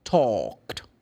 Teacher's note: According to my explanation here, talk, the last letter K, the sound of letter K, voiceless, the ed is going to be pronounced t